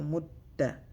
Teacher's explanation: You gotta read the ta twice. First with a sukun, mut, then ta, mutta.